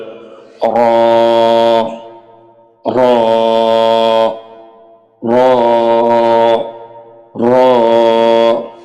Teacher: জিহ্বার আগার পিঠ তার উপরে তালুর সাথে লাগিয়ে আওয়াজকে মোটা করে একালিপ টেনে পড়তে হবে।